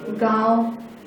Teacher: तो ऐसे वर्ण जिसमें इस चिन्ह का उपयोग किया गया है, मतलब वो क्या है, अनुनासिक है। अनुनासिक का उच्चारण नाक और मुंह दोनों से किया जाता है।